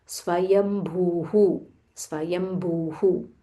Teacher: Again there is a half m and then a full Mahaprana bha, and this is Dhirga bhu.